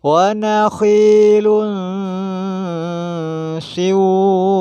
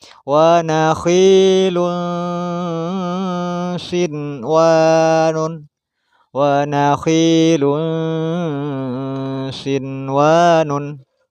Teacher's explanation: nun mati bertemu dengan waw tapi dalam satu kalimat, maka tidak boleh dibaca idgham bi gunnah. Harus dibaca izhar atau jelas.